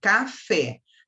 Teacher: A sílaba átona é o K, a sílaba tônica é o Fé